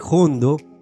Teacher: proviene en realidad de la palabra hondo, pero debido a que muchos andaluces pronunciaban esa H inicial con una aspiración tan fuerte, el vocablo acabó sonando como si tuviese una J